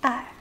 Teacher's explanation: fourth tone so a little harsh